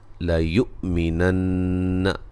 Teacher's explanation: حمزہ کو جھٹکے سے ادا کریں گے، نون مشدد پہ غنہ ضروری ہے